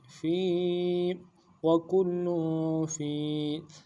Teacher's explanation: فا کو یا کے ساتھ ملانا ہے، یا مدہ ہے ایک مقدار میں کھینچیں گے